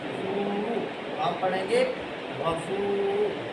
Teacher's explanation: واو ساکن سے پہلے پیش آ جائے، تو ہم نے واو مدہ پڑھنی ہے، ایک الف کے برابر لمبا کریں گے